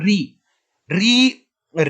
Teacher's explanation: इसके बाद देखो, री री री पहले देख लेते हैं, क्योंकि अ आ ई उ री, तो री का उच्चारण स्थान होता है मूर्धन्य, यानी कि जब हम री बोलते हैं तो हमारी जीभ पीछे को मुड़ती है, हमारी जो जीभ का जो ऊपर का जबड़ा वाला हिस्सा होता है, तो उसमें पीछे की तरफ लगती है री री।